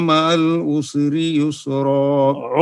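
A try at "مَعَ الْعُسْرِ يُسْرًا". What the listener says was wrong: उस नहीं करना, सीन में कलकला नहीं करना, उसरी युस्रा।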